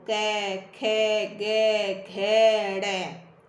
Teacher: सारी कंठ से आवाज निकल रही है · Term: क वर्ग